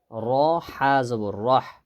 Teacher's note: এই হা গলার মানে হলকের মাঝখান থেকে